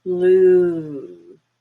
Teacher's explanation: Blue. Really high up in the back and longer.